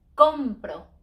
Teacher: when I buy compro because it ends in a vowel so we don't stress in the last syllable we stress next to last